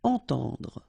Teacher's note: two times this nasal, entend, and then at the end don't insist on the final E, dr, entendre.